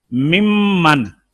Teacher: جیسے دیکھیے یہ نون کا میم میں ادغام کریں، نون کا میم میں، ممن، نون کا مخرج اور ہے، زبان کی نوک اور سامنے والے دانتوں کے کنارے، اور میم کا مخرج ہے دونوں ہونٹ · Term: ادغام متقاربین